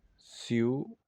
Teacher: I más U también vienen a ser una sola sílaba. Por eso es que sigue siendo un diptongo.